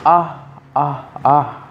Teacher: If you say ah, ah, ah with one ah right after another and do not sustain the vowel sound, you will be producing glottal stops between the vowels